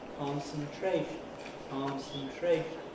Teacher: The point is that both of these can receive accent. When you say the word in isolation, what you do is put a pre-nuclear accent on the first of them and a nuclear accent on the last, and say concentration, concentration.